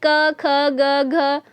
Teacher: क वर्ग है जो हमारा उच्चारण स्थान कंठ है, उसका दूसरा नाम क्या हो जाएगा, कोमल तालव्य